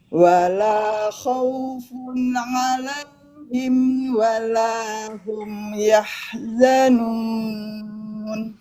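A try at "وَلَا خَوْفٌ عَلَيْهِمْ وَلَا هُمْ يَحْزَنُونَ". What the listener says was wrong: tekan lagi huruf ainnya bu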